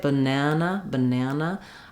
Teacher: not really breaking between the syllables when I say banana banana I don't have a stop even though my second syllable starts on the n Sound I go in and out of those vowels and consonants clearly